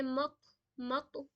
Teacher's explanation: यहां पे कलकला करेंगे मक मक पूरी इसकी साउंड निकलेगी इको वाली